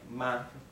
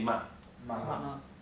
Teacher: a light tone means it it basically doesn't have a tone okay maybe it's pronounced shorter